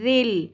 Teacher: ذال نرمی سے لام کے ساتھ جوڑ دینا ہے